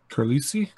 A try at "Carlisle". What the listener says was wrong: I think that's just Carlisle. Yeah, the S is silent.